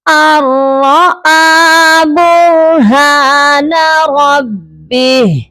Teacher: آپ نے صرف ملا کر پڑھنے ہیں اور نون کو آپ نے چھوڑ دینا ہے. اگر آپ نے نون کو پڑھا تو یہاں غنہ ہو جائے گا جبکہ یہاں پر غننے کا رول نہیں لگے گا. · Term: ادغام بغیر غننے